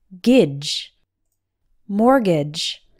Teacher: The T is silent. And the second syllable, G-A-G-E, has an A sound that sounds more like the I in bridge.